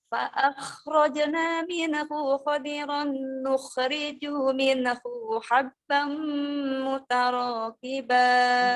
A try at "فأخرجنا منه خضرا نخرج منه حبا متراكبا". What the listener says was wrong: Ini bilang minhunya selalu minehu. Ada ne-nya, sayang. PR, mine, nun sukunnya banyak mantul.